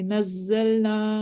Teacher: زا میں وسلنگ ہو رہی ہے، چونکہ یہ وسلنگ لیٹرز میں سے ایک ہے، یعنی سٹی والے حروف میں سے ہے، اس لیے ہم اس کو وسل کے ساتھ ریڈ کریں گے.